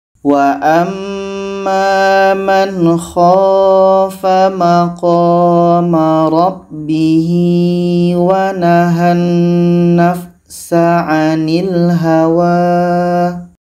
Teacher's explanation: Dalam ayat 40 di sini ada mad pada rabbihi wa. Ha dhamir bertemu selain hamzah mad silah qasirah, 2 harkat.